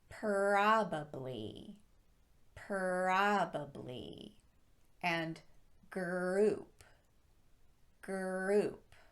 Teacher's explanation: inserting an er sound right after that first consonant and keeping the lips unprotruded